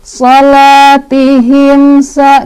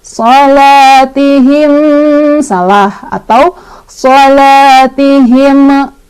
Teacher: Ada izhar syafawi, sebabnya karena ada mim sukun bertemu dengan huruf sin. Dibacanya mim sukunnya jelas, nggak boleh mantul, nggak boleh ditahan.